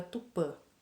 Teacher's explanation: ele indica o som nasal feito pela boca e pelo nariz ao mesmo tempo